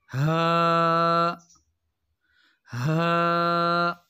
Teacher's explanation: ہا ہا۔ اور ہا کی جو آواز ہے یہ بغیر رگڑ کے نکلتی ہے۔ ہا، اور یہ حلق کے بالکل آخر سے ادا ہوتی ہے۔ ہا ہا۔